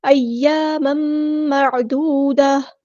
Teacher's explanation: تنوین کے بعد میم آیا ہے، یہاں پر ادغام ہوگا، ادغام مع الغنہ